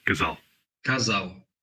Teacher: In European Portuguese it's l or ul, like a dark L sound. In Brazilian Portuguese, it's like a w, like a W sound after a vowel.